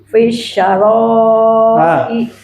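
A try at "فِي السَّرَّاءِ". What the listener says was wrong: Fis-sarra'i. Tasdid doranya. Fis-sarra'i. Hati-hati tasdidnya.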